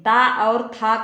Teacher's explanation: ता और था का उच्चारण स्थान दंत होता है, लेकिन इसका सूत्र क्या होता है, लिरित लसानाम दंतः, लिरित लसानाम दंतः।